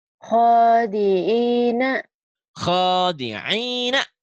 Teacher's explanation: benar bunyi hurufnya tapi ini ho-nya panjang.